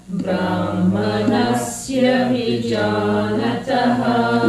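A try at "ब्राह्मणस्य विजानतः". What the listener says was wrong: Let me hear the ha in Brahmana. Yeah, you have to pronounce all the Mahapranas.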